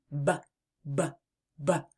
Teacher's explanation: I hear a buzz, buzz, buzz every time I make the sound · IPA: /b/